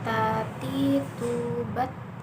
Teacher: Melafalkan dengan cara menyentuh ujung lidah dengan gusi gigi seri bagian atas dengan mengalirkan sedikit nafas kita. · Ada udara yang mengalir ketika melafalkan huruf Ta.